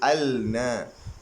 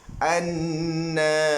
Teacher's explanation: Dari segi tulisan ada lam, tetapi dari segi bacaan tiada dibunyikan al. Kita tak sebut al-na, tapi kita sebut an-nasa. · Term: alif lam syamsiyah